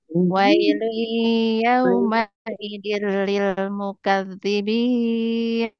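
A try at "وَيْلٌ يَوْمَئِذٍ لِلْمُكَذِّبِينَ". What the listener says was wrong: Nah, kurang tinggi sedikit. Wailu yawma idzil lil mukadzibin.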